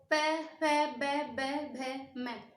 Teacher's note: देखिए हमारे लिप्स जो है आपस में मिल रहे हैं